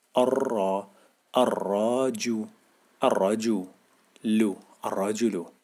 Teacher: بنطق حرف الراء مرتين عشان عندي شده